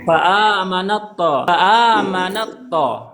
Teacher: Tetapi makhrajnya sama. Ta keluarnya dari lisan, to juga keluar dari lisan. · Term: idgham mutajanisain